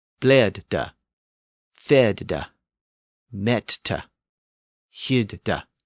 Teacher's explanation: So that had the effect of closing that first syllable. That initial vowel was now boxed in with that consonant on the end, and it made the vowel pronunciation short.